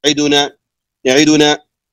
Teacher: الحركة لم نكملها، ما أتممنا الحركة ولا أكملناها، فلذلك الدال ما أعطيناها حقها في ضمها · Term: الاختلاس